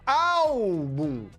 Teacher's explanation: a sílaba forte é paroxítona, é a penúltima.